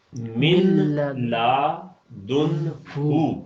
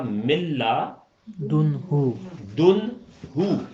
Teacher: نون بالکل ہی ختم ہو جائے گا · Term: ادغام